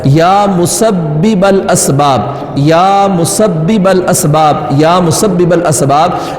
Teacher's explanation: پہلی با ہے اس پر تشدید ہے، یہاں پہ رکنا ہے، اور پھر دوسری با کو آگے ملا دینا ہے